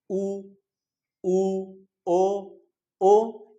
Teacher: वृत्त मुखी मतलब जब आप स्वर का उच्चारण कर रहे हैं और आपके होठ जो है वो क्या हो रहे हैं? वो गोल हो जा रहे हैं।